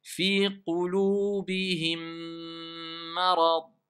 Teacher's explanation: Mais la règle, c'est que c'est l'assimilation. C'est le deuxième mime qui a assimilé le premier. Et donc, quelque part, ils se sont renforcés les deux, si on veut. Ça fait une shidda, simplement. Donc, quand vous allez lire comme ça, vous allez dire Fi qulubihim marad.